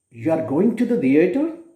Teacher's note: it gives the meaning of a question because it is used with the falling rising tone. So when a statement is used with a falling tone, it becomes a statement, but if it is uttered with a rising tone, it becomes a question.